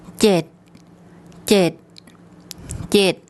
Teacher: Regarding the tone rules, this is a mid-class initial consonant. Because it ends with a T sound, it's a dead syllable, and this is a short vowel, so it makes a low tone.